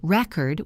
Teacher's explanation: If I say record with the stress on the first part, it is a noun. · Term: word stress